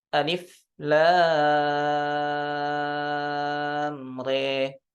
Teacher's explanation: Sedangkan di riwayah Syu'bah bi imalati fathatir ra wal alif.